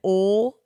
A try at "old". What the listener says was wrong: It's not old. It's old. You're not even pronouncing the L though. Oh, you're just making a noise. You are literally just making the O sound.